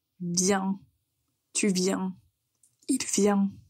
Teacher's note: Mais au singulier, vous allez avoir la voyelle nasale.